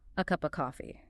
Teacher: Where of becomes v, or sometimes just a cup of coffee.